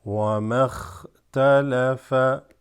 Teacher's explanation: And then bringing it here, wama, and then this drops, right? Hamzatul wasl drops, goes straight into the kha with a sukoon.